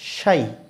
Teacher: কেউ যদি বলে সাই, সাই তাহলে কিন্তু হবে না, শাই, শিন আছে বলতে হবে শাই